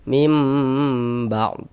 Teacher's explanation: Nah, di dighunahkan. Jadi bagian mimnya itu suaranya itu kita tahan, kita panjangkan sejenak. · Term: iqlab